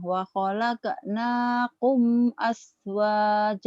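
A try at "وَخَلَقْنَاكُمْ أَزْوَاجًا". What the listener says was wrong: Jangan as. Itu punya bahasa Az. Az. Masih as ya. Az. Az. Jangan ke S, ke Z. Az. Wa khalaqnakum azwajan. Wa khalaqnakum azwaja.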